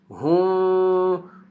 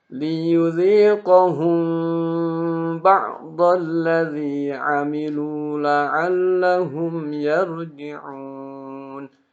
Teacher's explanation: Nah, lama-lama nanti ketika sudah mulai paham belajar baru di hukum ikhfa syafawinya dipraktikan. Di mana huruf mim ini dan ba ini ketika dia bertemu, maka si bibir kita ini terbuka sebesar biji beras atau ada bolongnya